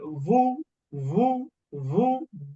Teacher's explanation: ওয়াও দুই ঠোঁট গোল করে একেবারে বু এটা উচ্চারণ আসবে না, আবার উ এটাও না, উভয়টা মাঝখানে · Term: ওয়াও পেশ